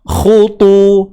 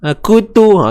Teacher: huruf kha baris depan khu tebal dan perlu dimuncungkan bibir.